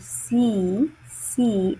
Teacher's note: in the word see, the sound s is a voiceless sound, right? Because the air is passing through an upper vocal fold.